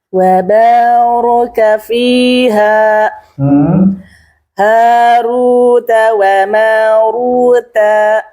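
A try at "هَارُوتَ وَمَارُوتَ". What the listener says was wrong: Taknya jangan panjang.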